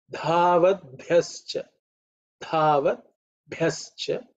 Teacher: Bha has to be aspirated with a little bit of force